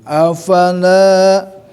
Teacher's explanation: ingat bahwa ada alifnya, harus panjang ya, mad tabi'i